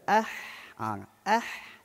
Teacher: huruf ha huruf yang di tengah halkum sebab tu masa kita mematikan huruf ha tu kita tekan tengah